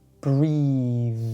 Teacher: For this, we use the voiced TH sound.